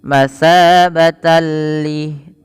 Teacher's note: perhatikan ketika bertemu lam, tanwinnya langsung masuk kepada huruf lam, yang dimana di sini ada bacaan kita kenal dengan istilah hukum tajwidnya idgham bila gunnah.